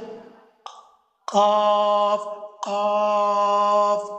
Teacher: জিহ্বার গোড়া, তালুর নরম অংশ থেকে উচ্চারিত হয়। জিহ্বার গোড়া তালুর নরম অংশ থেকে। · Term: হরফে লাহাবিয়া